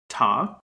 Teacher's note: an unvoiced alveolar stop